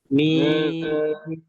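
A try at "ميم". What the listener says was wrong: মিম ঠোঁট চাপ দিয়ে বলতেছেন না সবাই? চাপ দিয়ে হবে।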